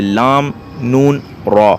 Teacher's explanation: وہ حروف جو زبان کے کنارے سے ادا ہوتے ہیں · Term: حروف طرفیہ یا زلقیہ